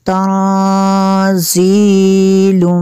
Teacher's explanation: تنزیل، یہاں پہ نون ساکن ہے، نون ساکن کے بعد زا ہے حروف اخفا میں سے، تو یہاں پہ غنہ ہوگا